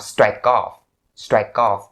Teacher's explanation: Because strike has that k final sound, and off starts with an R sound, like I said before. So you link the k sound to off, you have strike off.